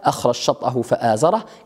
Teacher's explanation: ها هنا تدغم الجيم في الشين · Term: إدغام الجيم